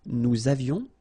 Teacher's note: little liaison, final S not pronounced